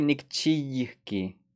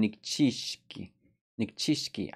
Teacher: So that Y will become a sh sound. Nikchiyiki will become nikchishki.